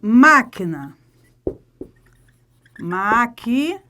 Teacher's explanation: Qual é a sílaba mais forte? É a antepenúltima, proparoxítona.